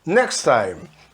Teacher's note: Next, sem falar o T, junta tudo. Next time, sem falar o E no final.